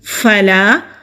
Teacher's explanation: فا ہونٹوں سے ادا کریں گے، ہلکی سی ہوا کے ساتھ